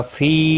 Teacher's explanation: فی 3 الف کے برابر کھینچ کر پڑھیں گے، مد منفصل ہے